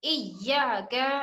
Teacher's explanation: ایا پہ ہم نے زور کیوں دیا؟ کیونکہ اس کے اوپر تشدید آ گیا ہے, اور جس حرف کے اوپر تشدید ہو وہ ہم شدت کے ساتھ پڑھیں گے.